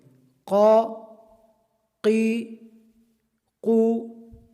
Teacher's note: یہ قاف حروف مستعلیہ میں سے ہے، اس کو پر پڑھیں گے